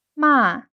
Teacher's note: And falling tone, the word for scold